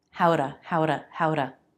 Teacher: I'm making that with a flap T